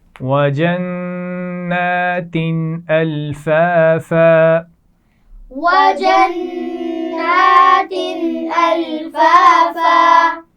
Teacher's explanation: وَجَنَّاتٍ نون پر غنہ کیا جائے گا اور تا پر تنوین ہے، دو زیر، لیکن اس کے بعد ہم نے غنہ نہیں کیا کیونکہ حروف حلقی میں سے حمزہ آ گیا